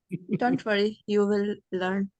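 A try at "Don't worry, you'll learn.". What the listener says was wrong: when you see the contracted form then read the contracted sounds as well okay make contracted sound don't say you will learn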